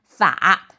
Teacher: in Taiwan Malaysia and Singapore it's pronounced as a third tone